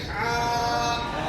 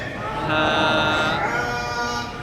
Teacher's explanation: हल्क के बीच से हा